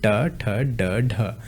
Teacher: ट, ठ, ड, ढ। ये बोले जाते हैं मूर्धा से।